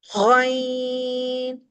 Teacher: وہ، عین، یہ ہا کے گروپ کا ہے جہاں مڈل آف تھروٹ یعنی وسط حلق سے ادا ہوتا ہے اور اس میں عین درمیان سے حلق چپکتا ہوا فیل ہوتا ہے۔ غین، یہ غرغراہٹ کے ساتھ ہے، خا کے مخرج سے ہے، اپر تھروٹ سے پڑھا جاتا ہے اور ہمارا حلق بند ہوتا فیل ہوتا ہے۔ غین، موٹا پڑھنا ہے، اس کی صرف یہ ہے کہ اس کو ادا کرتے ہوئے ہمارا منہ کھلتا ہے اور ہونٹ اوول شیپ میں آ کے اس کو موٹائی کے ساتھ ادا کرتے ہیں۔